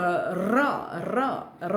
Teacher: પ્રકંપી વ્યંજન જ્યારે બોલો છો ત્યારે જીભ કંપ અનુભવે છે તો ર એ પ્રકંપી વ્યંજન છે આ આપણને ખબર હોવી જોઈએ